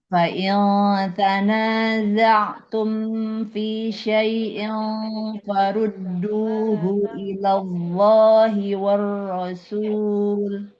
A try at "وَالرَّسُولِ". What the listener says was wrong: Well, hati-hati wa-nya jangan tebal Ibu, jangan wur. Farudduhu ilallahi warrasuli. Jadi war. Wa-nya jangan ikut tebal Ibu.